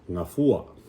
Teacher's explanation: the second to the last syllable is the one you want to emphasize